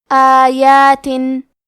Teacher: کلمت آیات میں الف پہ کھڑا زبر ہے اور یا پہ بھی کھڑا زبر ہے، یہ دونوں مد الف ہے، تو ہم یہ دونوں مد کو برابر سے ادا کریں گے